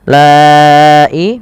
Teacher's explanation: Lai mad wajib muttasil panjang yang 4 harakat atau 5 harakat